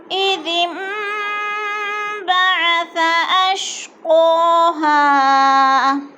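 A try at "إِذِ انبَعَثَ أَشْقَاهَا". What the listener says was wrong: बाअस नहीं है सौद नहीं है इधर सा है सा को नरम करके पढ़ो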